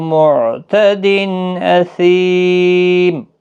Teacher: معتدن تنوین کے بعد حمزہ آیا ہے اس لیے اظہار ہوگا، اظہار حلقی، سی یا مدہ ہے، میم ساکن ہوگا وقف کی صورت میں، 3 سے 5 الف کے برابر کھینچ کر پڑھیں۔